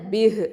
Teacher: பிஹி அப்படின்னு இருந்துச்சுன்னா நிப்பாட்டும் போது பிஹ் அப்படின்னு வரும்.